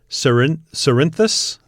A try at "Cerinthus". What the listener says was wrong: Well, I would go with Corinthus. I'd go with a hard C as opposed to the soft C.